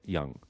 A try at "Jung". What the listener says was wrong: That J could be silent, but it's not.